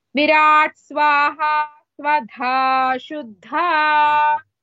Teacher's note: Shuddha, one Dha is Mahaprana.